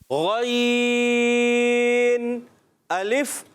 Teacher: غین کہاں سے ادا ہوتا ہے؟ حلق کے اوپر والے حصے سے